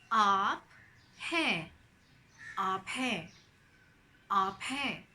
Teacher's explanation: Is not it's not pronounced. It is the nasally sound. In Urdu, we have noon ghunna for that